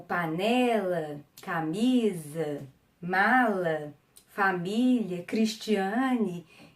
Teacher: as paroxítonas, que são as que têm a penúltima sílaba tônica